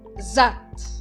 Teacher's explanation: agora aqui nessa palavra eu enfatizo a vogal a z é como se tivesse um acento invisível aí de novo